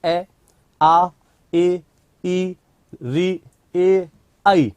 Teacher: इनमें होंठ गोल ना होकर फैले रहते हैं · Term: अवृत्ताकार स्वर